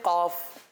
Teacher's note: कॉफ को पुर यानी मोटा पढ़ते हैं। · یہ ہے زبان کی جڑ والا حصہ، یہ حلق سے نہیں ہوتا